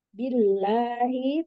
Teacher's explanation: Billahi tadi agak singkat jadi harusnya dua harakat